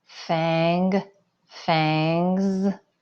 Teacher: your throat is kind of buzzing. So the suffix S is going to buzz too.